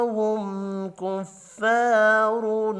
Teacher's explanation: میم ساکن کے بعد کاف ہے، اظہار شفی ہوگا، یہاں بھی غنہ نہیں ہوگا